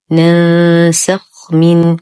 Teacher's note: ننتبه كثيرا لإسكان الخاء. الخاء حرف رخو مفخم، ننتبه من عدم ضمه، لا نقول ننسخ وهذا خطأ.